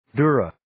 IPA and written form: 'dʊrə (Dura)